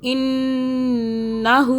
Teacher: ہو کو ایک الف کے برابر کھینچا. انہو، آگے چلیں.